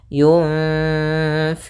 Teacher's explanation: nunnya kita samarkan kepada huruf fa, kemudian ditahan dengungannya atau gunnahnya. Sepanjang 2 harokat. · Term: ikhfa